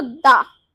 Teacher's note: जो हमारी जीभ है तो दांतों को टच कर रही